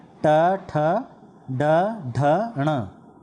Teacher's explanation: जीभ का अगला भाग जब मूर्धा यानी कि दांतों के ऊपर वाला भाग को स्पर्श करता है तो इन ध्वनियों का उच्चारण होता है। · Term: मूर्धन्य